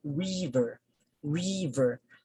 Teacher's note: so you notice that the first syllable stands out